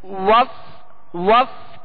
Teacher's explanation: واو میں ہونٹ گول ہوں گے اس کی ادائیگی میں